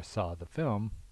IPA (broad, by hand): sɔ ðʌ film